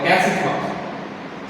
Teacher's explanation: the stress would naturally move to eats